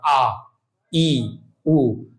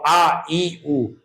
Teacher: जिनके उच्चारण में हवा केवल मुख से निकलती है उन्हें क्या कहते हैं? निरनुनासिक स्वर।